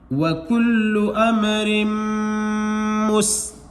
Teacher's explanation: اب دیکھیں نون یا میم پر بتایا گیا ہے سبق نمبر 13 کے اندر کہ اگر تشدید آئے تو ڈبل پڑھیں گے، ڈبل پڑھنے کے ساتھ ساتھ اس پر گننا بھی کریں گے، تو میم کی آواز کو بھی ناک میں ایک الف کے برابر آپ نکالیں گے